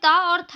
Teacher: त और थ जो है वो दंत्य ध्वनि है